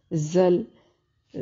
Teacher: زا کو ہمیشہ سختی سے پڑھتے ہیں، یعنی اس کے ساتھ بھی سیٹی کی ساؤنڈ آتی ہے